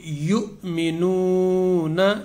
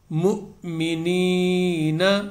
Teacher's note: میم کے ساتھ حمزہ ساکن ہے، تو میم جب اس کے ساتھ ملے گا تو جھٹکا لگے گا۔